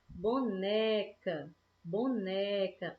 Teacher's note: A gente está puxando mais, né? A gente fala mais forte, mais demorado, o né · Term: paroxítona